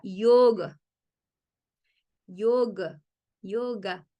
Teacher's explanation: Yoga, realmente no es yoga, es yoga. Tiene una A al final, pero es casi muda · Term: A corta